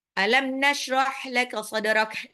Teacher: Nashrah haknya harus tipis tenggorokan tengah.